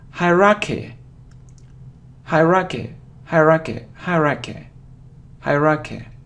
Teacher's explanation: So you see that the main stress is on the first syllable.